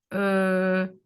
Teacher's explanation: if we are using the central area of the tongue we can say this is a centering or a central vowel like uh the hesitation sound